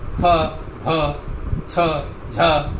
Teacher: तो प्राणवायु का अधिक प्रयोग करेंगे, इसलिए ये महाप्राण कहे जाते हैं